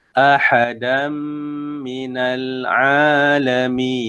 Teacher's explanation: ahadam tu diidghamkan ke dalam huruf mim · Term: idgham ma'al gunnah